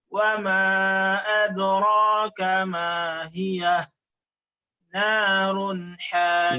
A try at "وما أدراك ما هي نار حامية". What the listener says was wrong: زد في المد. وما أدراك 4 حركات.